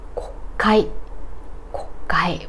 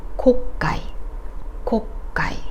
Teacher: which is an atamadaka word, o after k isn't devoiced